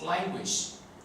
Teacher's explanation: En la palabra language, la segunda A se pronuncia I